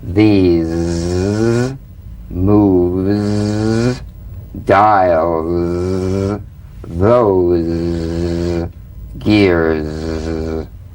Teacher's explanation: The Z vibrates in that very small open space between the tongue and the upper teeth. Right in here. · It's in that little space that the Z sound is formed. So feel a smooth, strong vibration in the teeth and in the front of the tongue.